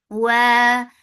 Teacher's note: Wa makhraj of waw, circling your lips and make it two counts long.